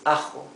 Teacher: It's rougher than the English H.